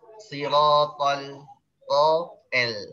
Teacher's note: Gara-gara lamnya pengen ditipisin, tonya jadi ikut tipis. Tonya tetap tebal.